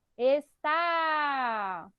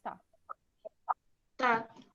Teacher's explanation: é o tá a sílaba mais forte né é a última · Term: oxítona